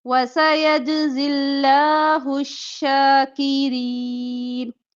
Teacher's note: अब लफ्ज़ अल्लाह का लाम बारीक पढ़ेंगे, पीछे ज़ेर है इस वजह से